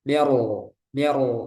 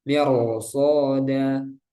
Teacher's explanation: Ini kan sebelumnya kasrah tapi karena ada huruf istilah huruf shad. Setelah ro maka rnya dibaca tebal.